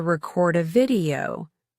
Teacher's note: when you want to say, I'm going to record a video, the stress falls on the second syllable.